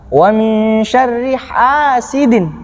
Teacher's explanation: bacaan mat tabi'i, panjangnya satu alif dua harokat